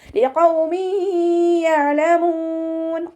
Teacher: ഖാഫ് ഇസ്തിഅലാന്റെ letter ആയതുകൊണ്ട് നാവിൻ്റെ back മുകളിലേക്ക് ഉയർത്തിയിട്ട് തഫ്ഹീം ചെയ്യുക. ഖാഫിൻ്റെ സൗണ്ടിനെ ഹെവി ആക്കി കൊടുക്കുക കേട്ടോ.